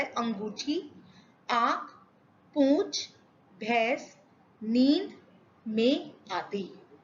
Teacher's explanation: हवा मुंह और नाक दोनों से बाहर निकलती है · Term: अनुनासिक